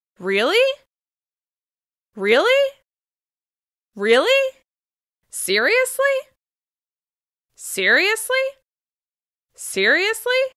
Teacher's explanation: In this case, you want to use one of these following expressions with rising intonation. We use rising intonation to show shock, surprise, and disbelief. · We use rising intonation to show shock, surprise, and disbelief. Listen to the steep rise at the end.